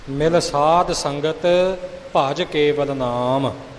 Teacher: ਕਈ ਭੱਜ ਜੋਰ ਕੇ ਕੱਸ ਕੇ ਬੋਲਦੇ, ਉਹ ਨਹੀਂ